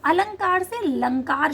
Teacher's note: आदि स्वर का लोप होने लगा।